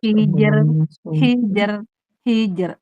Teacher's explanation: Jimnya syiddah dan qalqalah tipis. Jimnya tipis rnya tipis jadi gampang.